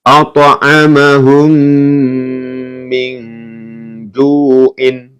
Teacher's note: ini qalqalah ya, dipantulkan. At'amahum min ju'in.